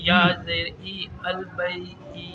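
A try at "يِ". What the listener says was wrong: نہیں، ای نہیں، جی البئی جی، جی جی، یا یہ یا زیر جی، نہیں ای نہیں، ای نہیں، جی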